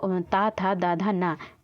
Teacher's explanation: ऊपरी दांतों के निकट से बोला जाता है